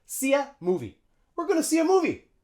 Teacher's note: See ya, and notice how the article a, we just use schwa for that, and we link it onto the verb.